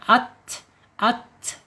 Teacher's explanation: ketika ta ini sukun udaranya tidak boleh dipentokkan ya, tapi harus dialirkan ya, at gitu ya, mengalir. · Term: al-hams